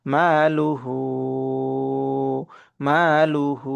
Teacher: মার মধ্যে টান হবে কিন্তু লুহুর লামের মধ্যে টান হবে না